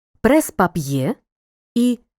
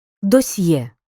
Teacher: при м'якому знаку теж Роздільна вимова але м'яка бо ця літера може стояти тільки після м'яких приголосних д т